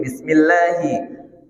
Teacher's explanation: Bismillahi, hi tak boleh masuk ke hidung.